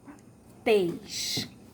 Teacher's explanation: Então, o som fechado vai ficar o acento circunflexo. E tês é a sílaba mais forte, é a sílaba tônica.